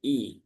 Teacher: i-nya pastikan kasrah terbaca i ya, bukan e ya, bukan idza tapi i.